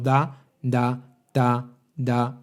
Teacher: la punta de la lengua debería estar contactando en la zona donde se unen los dientes superiores y la encía